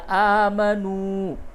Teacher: الف کھڑا زبر آ اور یہ نون واو پیش نو، دونوں کو کھینچیے